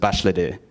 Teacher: when you add the di suffix, the a becomes an I again, so it's başladı, began.